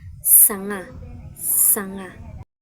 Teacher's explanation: Pinapadaan natin yung hangin sa makipot na daanan sa bibig natin kay nagkakaroon ng kiskis o ingay. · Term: fricative